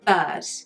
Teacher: when the R isn't followed by a vowel, we don't pronounce it. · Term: English accent